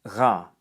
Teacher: In French, it's a guttural sound that's articulated at the back of the vocal tract, usually with a uvular fricative,